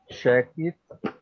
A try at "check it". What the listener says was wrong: keep the sound because if you say check it, you have two words. Check it. Now you have two words, but when you speak, you join or you connect or you link the sounds.